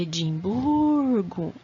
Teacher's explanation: em Edimburgo a sílaba tônica é a penúltima Então vai ser paroxítona